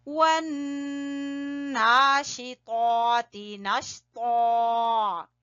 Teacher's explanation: نون پہ غنہ کریں، کھڑی زبر کو کھینچیں